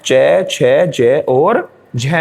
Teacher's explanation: उन वर्णों को उच्चारित करते समय मुख में घर्षण महसूस होता है, इसीलिए इनको संघर्षी व्यंजन कहते हैं। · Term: स्पर्श संघर्षी